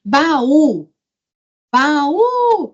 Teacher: a palavra baú sílaba tônica u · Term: oxítona